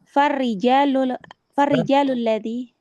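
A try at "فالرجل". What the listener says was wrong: Rajul, bukan rijal. Kalau rijal jinnya panjang. Farrajulu, satu orang.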